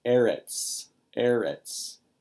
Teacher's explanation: It's accented on its first syllable